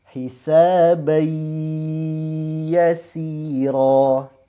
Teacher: Tidak ada sedikit pun suara dengung yang keluar, ya. Murni 100% ke huruf ya.